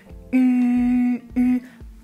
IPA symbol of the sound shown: y